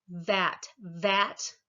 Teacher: you can feel your vocal cords vibrating at the v.